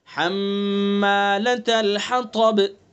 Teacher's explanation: حمّا میں حرف غنہ ہوگا، چونکہ میم مشدد ہوتا ہے